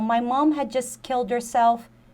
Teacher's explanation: eu não pronunciaria nem esse D, assim, e nem o T